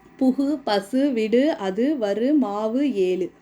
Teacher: ஓசை குறையாமல் ஒரு மாத்திரை அளவில் முழுமையாக ஒலிப்பதை முற்றியல் உகரம் என்பர்